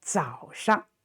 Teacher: And so that's how the Chinese character, developed from the very ancient, we say, graphic picture to the standard writing. So 早上, and this 上 is not stressed, no tone